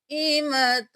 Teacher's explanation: اب یہاں پر 5 الف کے برابر کھینچیں گے ، قاف زبر الف مد، قائمۃ، دوبارہ ہم اخفا کریں گے،